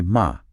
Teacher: the dropping of the letter S at the end of syllables and words